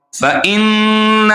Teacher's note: غنہ کہتے ہیں ناک میں آواز کو دبا کر رکھنا. ایک الف کے برابر یا دو حرکات کے برابر ناک میں آواز کو رکھیں گے تو یہ غنہ کہلائے گی